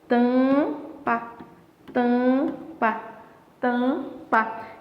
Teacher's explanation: Porque esse M aqui, ele tá só nasalizando a vogal. · Então, automaticamente, ó, nesse tampa, você não tem a pronúncia do M.